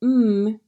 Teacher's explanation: in the same position as the other sounds of O Street you bring your lips together so the sound is pushed out through your nose this is called a nasal sound